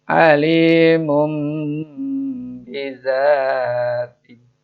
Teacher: Nun mati bertemu ba. Itu namanya iqlab, membalik suara N menjadi suara mim. Jadi alimun bijati menjadi alimum bizati.